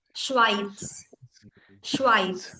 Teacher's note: German වල z එක කියනකොට ඉස්සරහින් t sound එකක් ගහනවා